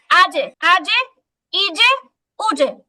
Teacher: জিহ্বার মাঝখান উপরে তালু বরাবর লাগে, শক্ত একটা উচ্চারণ হয়, জিম হয়। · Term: কলকলা